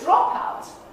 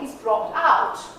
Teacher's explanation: the stress that you see here on the first syllable of the noun form pops over to the final syllable of the verb form